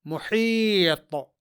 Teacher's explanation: یہاں حرف طا میں قلقلہ ہوگا کیونکہ طا حرف مقلقل ہے اور یہاں یہ ساکن ہے.